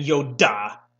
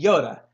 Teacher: you can flip your R because the D sound is the same sound as the R in Spanish